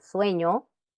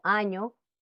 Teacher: fonema consonántico nasal palatal en ñe es decir uso de nariz y paladar procede de